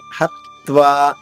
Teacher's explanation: హత్వా హా పైన ఆఘాతం ఉంది, త్వాలోని తా 2 తాలవుతుంది.